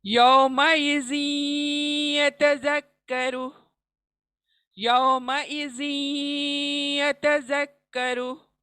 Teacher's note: जिन का जो तनवीन आया है, नून हम या में इदगाम कर देंगे।